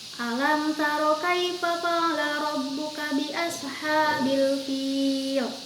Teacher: Mim menghadapi huruf ta. Huruf ta ini adalah huruf dari izhar syafawi, maka membacanya jelas.